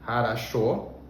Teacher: Essa palavra tem 3 Os, harasho, mas o último, que a gente pronuncia com mais força, ele tem som de fato de O, e os outros 2 se pronunciam como A